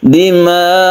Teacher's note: Untuk sukun hamzah yang kita wakofkan, maka nadanya kita tinggikan sedikit ya.